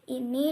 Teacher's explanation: vokal tinggi atas seperti bunyi I dan U